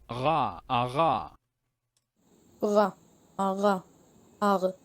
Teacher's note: Approximant. Okay, voiced uvular approximant.